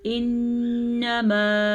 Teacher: نون کا غنہ ادا کرنا مت بھولنا، نون پہ شد ہے، یہ الف مدہ ہے، الف مدہ کو ہم کھینچ کے پڑھیں گے.